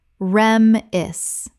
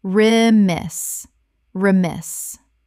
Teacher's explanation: Correct pronunciation, re-miss. Two syllables with the stress on the second. The first syllable is reduced.